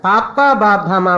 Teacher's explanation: all these are labials which come from the lips